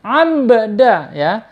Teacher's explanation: Abdina, di situ ada ba sukun ya. Ingat, ketika ada ba sukun berarti dibaca qalqalah ya. Qalqalah itu mantul. Nggak boleh abda, tapi harus dipantulkan.